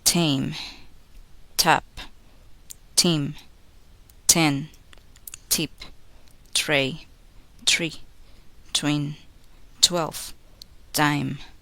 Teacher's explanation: When a word begins with T, make the sound with a noisy puff of air. · Place the tip of the tongue against the alveolar ridge, stop the air completely, and then release the air. Do not make a vocal sound. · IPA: /t /